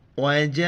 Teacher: مد ہے، 4 الف کی مقدار کھینچنا ہے